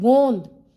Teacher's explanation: आ रही है नासिका से भी आवाज आ रही है गोंद मु और नासिका दोनों से आवाज आ रही है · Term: अनु नासिका